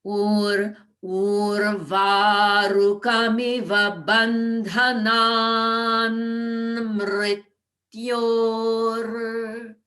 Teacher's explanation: the ta changes to the dental na at the end of bandhanan. So that a nasal sound just allows us to move right into the next nasal sound.